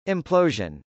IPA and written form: ˌɪmplˈoʊʒən (implosion)